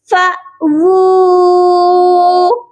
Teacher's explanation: بہت سے لوگ واو کے اوپر جب الٹا پیش ہوتی ہے تو او کی آواز کرتے ہیں، جو کہ حمزہ کے ساؤنڈ سے نکلتی ہے۔ یہاں پر واو کی آواز او نہیں آئے گی بلکہ وو آئے گی۔ یہ پڑھا جائے گا فا وو، اور اس کے آگے الف ہے جو کہ خالی ہے، وہ پڑھا نہیں جائے گا۔